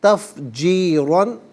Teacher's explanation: را پر دو زبر کی تنوین پر کر کے پڑھیں گے